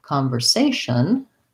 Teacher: for example, the word conversation, there I have third syllable stress